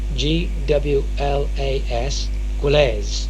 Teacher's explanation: quite difficult to pronounce but in reality quite simple because the W between the G and the L and the G and the r is barely voiced